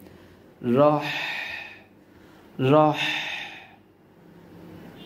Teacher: গলা চেপে উচ্চারণ করতে হবে পাশাপাশি বাতাসের একটি সাউন্ড গলা দিয়ে বের করতে হবে